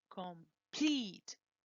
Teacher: the stress is in pleat